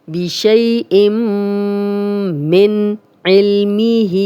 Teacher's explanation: تنوین کے بعد آگے میم ہے تو غنہ کریں گے